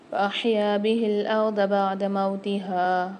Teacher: فَأَحْيَا میں حا کی آواز کو واضح کریں گے، یا کے ساتھ الف ایک الف میں دار کھینچیں گے۔